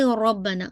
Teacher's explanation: रॉ को heavy रखिएगा क्योंकि रॉ के ऊपर फतह है